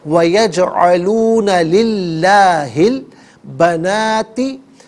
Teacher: درمیان میں سے الف یعنی حمزہ کو حذف کیا جائے گا